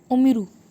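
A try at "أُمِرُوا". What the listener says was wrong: उमिरू, good, excellent.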